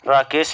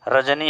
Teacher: रा को मूर्धा वर्ण भी बोला जाता है और प्रकंपित वर्ण भी बोला जाता है।